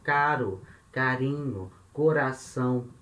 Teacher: Esse R de português a gente faz na ponta da língua. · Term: R fraco